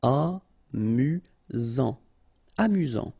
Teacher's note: Final T not pronounced. You've got only one S here between the vowels, so it's really this Z sound